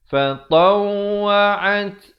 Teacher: Fatawa'at, ada bunyi angin pada huruf ta